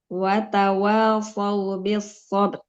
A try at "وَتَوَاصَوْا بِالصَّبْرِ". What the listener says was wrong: Sabar. Ranya jangan hilang.